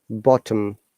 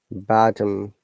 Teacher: We've got shorter sound in O, whereas it is a bit longer sound in American IPA.